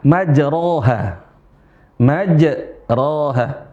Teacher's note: Karena yang fathah dibaca a, bukan dibaca u, bukan dibaca i dan lebih-lebih bukan dibaca dengan e.